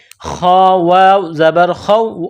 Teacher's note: ہدای فلا، لام الف زبر لا، فلا خوف، یہ خا ہے، جس طرح انسان گلے سے بلغم نکالتا ہے اسی طرح اس خا کو نکالیں گے